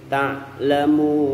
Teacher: Jadi murni wawunya itu nggak ada dengungnya, nggak ada di hidungnya